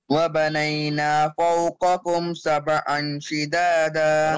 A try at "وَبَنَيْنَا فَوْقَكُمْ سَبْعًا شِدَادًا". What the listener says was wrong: Wrong. Apply إخفاء on سبعا.